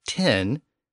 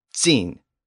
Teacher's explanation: Another sound change which occurred as part of this second High German sound shift was the T sound, which became a sibilant sound, either a TS sound or an S sound or a Z sound. And we can hear that change in the English number 10 and its German equivalent, zehn.